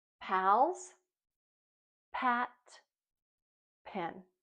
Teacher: Remember, when you make that sound, your lips start off tight, and when your mouth opens up, a puff of air comes out. And we know that this sound is unvoiced. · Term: P sound